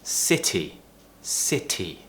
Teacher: you don't pronounce it as a D which is what Americans do